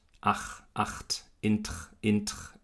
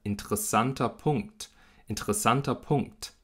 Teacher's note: ein Plusiv, ein Konsonant, der stimmlos ist und der überträgt jetzt diese Stimmlosigkeit auf das R. Das R ist also kein R, sondern es ist ein stimmloses Ch. Das ist fast wie der Achlaut.